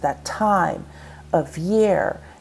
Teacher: notice how time is stressed, that time of year, year is stressed.